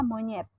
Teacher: direalisasikan sebagai bunyi E tengah bawah depan tak bundar apabila berada pada silabel tertutup seperti pada kata monyet.